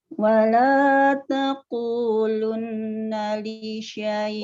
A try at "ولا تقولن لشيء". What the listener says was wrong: wala takulan, bukan takulun ya. Wala takulan. Jangan takulun, ayo tenang.